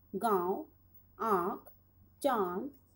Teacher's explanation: जिन वर्णों का उच्चारण नाक और मुंह दोनों से होता है वह अनुनासिक कहलाते हैं